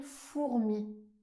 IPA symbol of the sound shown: u